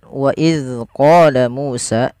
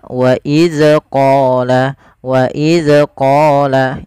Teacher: Kesalahan yang banyak terjadi adalah memantulkan huruf dzal. Padahal huruf dzal ini tidak boleh ada pantulannya di dalam melafalkannya. Yang kedua, hati-hati yaitu dalam melafalkan huruf dzal jangan sampai kita rubah menjadi huruf zai.